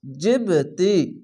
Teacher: এখানে অবশ্যই ধাক্কা মেরে নিচে সাউন্ড আসবে, এটি হচ্ছে কলকলা